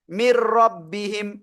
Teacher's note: গুন্না ছাড়া মিলিয়ে পড়বো, যেমন মির রব্বিহিম। অনেকে হয়তো বলেন মিন রব্বিহিম, এটা টোটালি ভুল। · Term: ঈদগামে বেলাগুন্না